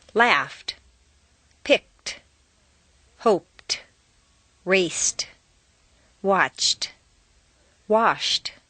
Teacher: T replaces D in the past tense after an unvoiced consonant sound